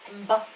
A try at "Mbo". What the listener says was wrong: Baby, you're saying mba. Mbo. It's too hard.